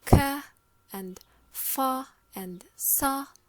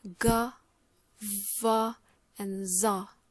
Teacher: the Fortis is a voiceless obstruent, while the Lenis is a voiced obstruent. Okay, as you can see, for example, we have for Fortis the ka and fa and sa.